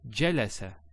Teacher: notice we don't elongate. There's no elongation of the sound.